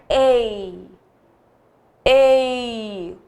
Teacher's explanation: o E com mais força, o I com menos intensidade. Logo, o I é o quê? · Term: semivogal